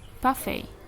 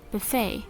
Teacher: British puts the stress on the first syllable of the word more often than American. So it is usually happens in a noun, so that British usually has a stress syllable in the first syllable than American.